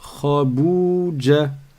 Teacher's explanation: le kha, il est grave. On ne dit pas khe